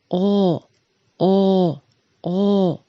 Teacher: Губы нужно вытянуть вперед и округлить, а язык отодвинуть назад. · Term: Звук О